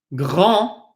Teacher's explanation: Number one, we do not pronounce the D. And then we notice we have an A-N, which is pronounced on.